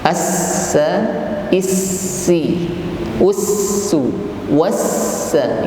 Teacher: Lalu kita tekan pada huruf sin yang bertasydid. Was, huruf sin diiringi dengan sifat hamas, mengalirnya nafas